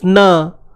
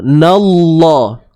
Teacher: Nun nipis, na. Lam pada kalimah Allah tu yang tebal